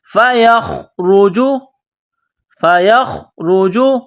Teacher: کو خوا کے ساتھ ملانا ہے خوا کو موٹا کرنا ہے جس طرح انسان گلے سے بلغم نکالتا ہے اسی طرح خوا کو نکالنا ہے را کو موٹا کرنا ہے را کے اوپر پیش ہے فَيَخْرُجُ